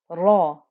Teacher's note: remember that ra was thick and heavy, so you can hear that thickness on the fatha